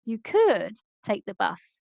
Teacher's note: in this case could is stressed to highlight that a suggestion is coming